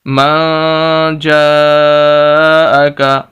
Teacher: مَن جَاءَكَ، جیم کیا کہ الف، اس پر مد، اور یہ سب سے بڑی مد ہے، 5 الف کے برابر ہم نے اس کو لمبا کرنا ہے